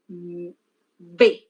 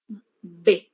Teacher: Mi labio inferior choca con el labio superior, se cierra en un momento y luego sale el aire. Así. B. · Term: oclusivas